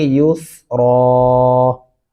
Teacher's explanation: یا پیش سین یوس، را دو زبر الف ران، یوس ران، اور وقف کرتے ہوئے پڑھیں گے یوس را. را کو موٹا اور پر کر کے پڑھنا ہے